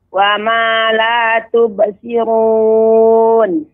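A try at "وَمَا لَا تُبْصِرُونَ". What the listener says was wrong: Ya, namun shad lebih banyak lagi desisnya, lebih banyak lagi hembusan napasnya atau udara yang mengalir. Tubsirun wa ma la tubsirun.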